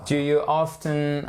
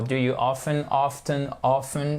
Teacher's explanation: Vous pouvez le prononcer le T ou pas, c'est comme vous voulez, c'est juste une question de style